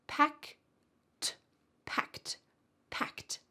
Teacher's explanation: That ed ending sounds like a T.